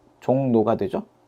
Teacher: 이 리을이 니은으로 바뀌는 비음화가 일어납니다.